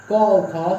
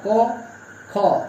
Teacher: उच्चारण हम करेंगे अघोष का क और ख, तो उसमें कंपन नहीं होगा।